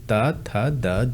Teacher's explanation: अगर दंत की बात कर लें तो ये बोले जाते हैं दंत से।